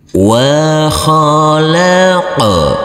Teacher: Huruf qaf harus kita pantulkan karena ini adalah bacaan qalqalah, huruf qaf yang bersukun